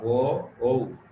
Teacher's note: ও ঔ উচ্চারণ করতে কণ্ঠ থেকে আসার পরে আমরা কি করি? ওষ্ঠ, মানে যে ঠোঁট দ্বারা, উভয় ঠোঁট দ্বারা এটাকে একটু চাপ দিতে হয় উচ্চারণের জন্য। ও ঔ, এই জন্য কণ্ঠ এবং ওষ্ঠ, ও এবং ঔ বর্ণ দুটির উচ্চারণের স্থান হচ্ছে কণ্ঠ ও ওষ্ঠ বর্ণ।